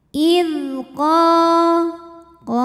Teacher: sebab ada Alif yang didahului baris fathah cara baca huruf qnya dipanjangkan dua harakat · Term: Mad Thobi'i zahiri